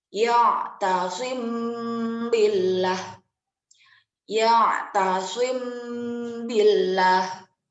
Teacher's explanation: Huruf ikhfa syafawi hanya satu, yaitu ba. Dan yaitu cara melafalkannya itu dengan menyembunyikan sebutan mim sakinah beserta dengung 2 harokat.